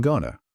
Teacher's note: deleted the t sound, and replaced the vowels with a soft, neutral uh sound. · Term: schwa